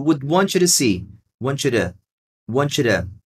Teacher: Você pode usar um stop T. Aqui, esse T de to see nunca é forte, tá? Você vai sempre dizer um Dzinho bem rapidinho.